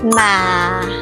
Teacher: It's like you are saying something slowly and your voice drops at the end. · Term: falling tones